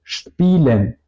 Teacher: Y un poco relacionado a la SSH sería la combinación de las letras SP, porque esta letra también al principio de las sílabas o de toda la palabra se pronuncia más como SCHP